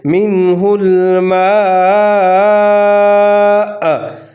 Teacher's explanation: منہ الماء، اور جہاں پر ہم وقف کریں گے حمزہ کے اوپر پیش ہے، لیکن جب ہم یہاں پر وقف کر رہے ہوں گے تو حمزہ پیش کو ساکن کی آواز میں ہم تبدیل کر دیں گے